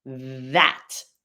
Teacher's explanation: You're just flowing air through the tongue and teeth. However, the TH in the word that, this has vibrating vocal cords.